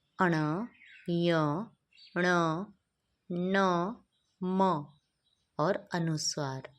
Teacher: तो इनका उच्चारण स्थान रहता है हमारा नासिका। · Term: नासिक्य